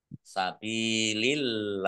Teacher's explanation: Fa kasroh ya sukun mat tobi'i, ba kasroh ya sukun juga mat tobi'i, masing-masing dibaca panjang 2 harokat. Allahnya dibaca tipis karena harokat di depannya kasroh. · Lam fathah berdiri mat tobi'i, tetapi karena bertemu dengan huruf terakhir yang dibaca sukun karena waqaf, maka menjadi mat arif lis sukun. Dibaca panjang boleh 6, boleh 4, boleh 2 harokat.